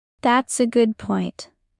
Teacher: Put a little stress on good. Smile while saying it.